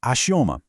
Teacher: A sílaba tônica é o O, a penúltima. Achamos, é a única paroxítona da lista.